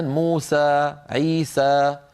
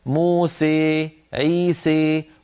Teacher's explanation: قبائل أخرى تخلط الألف بالياء خلطا كاملا فيتولد حرف بين الألف والياء تماما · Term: الإمالة